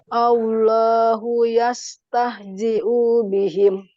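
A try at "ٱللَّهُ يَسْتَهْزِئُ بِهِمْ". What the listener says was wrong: Allahu yastahzi'u bihim. Nah, ini tidak panjang ya. Tidak panjang.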